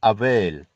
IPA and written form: əˈveɪl (avail)